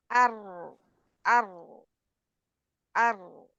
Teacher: रा का मखर जुबान की नोक और उसके बिल मुकाबल सामने के ऊपर वाले दांत दो दांतों के मसूड़े